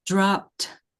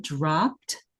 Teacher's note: the plosive sound of dropped, kind of exploding, exiting the mouth, is already so strong.